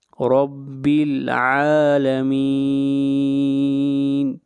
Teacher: عین کو کھینچ کر پڑھیں گے ایک الف کے برابر